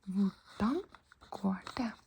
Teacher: The H is before the V, so we don't pronounce the H. We don't pronounce the H because it's the V.